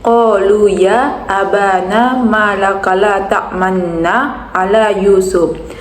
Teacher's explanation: Saat membaca lafaz la ta'manna, tepatnya pada huruf nun, bibir kita dimoncongkan, menyerupai bentuk bibir saat membaca dhamma. Apabila diibaratkan seperti membaca la ta'manunna, namun bacaan U-nya tidak dibunyikan, hanya bibirnya yang tetap dimoncongkan. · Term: ismam